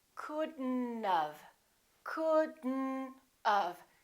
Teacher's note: We pronounce the D and then we connect the D next to the N and then the O disappears, but the T also disappears.